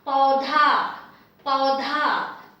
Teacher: Now I have the pa with au matra, so pau, and dha, the dental aspirated dha because of the loop with aki matra, dha, paudha, paudha.